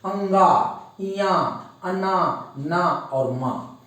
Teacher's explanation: जिसका उच्चारण अनुनासिक है, नाक से होता है।